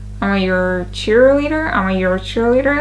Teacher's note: Your links to cheerleader.